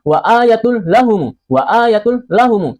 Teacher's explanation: Hukum bacaannya idgam bila ghunah. Dimasukkan tanpa didengungkan.